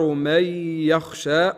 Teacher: هنا نون بعدها ياء ادغام مع الغنه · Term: إدغام مع الغنة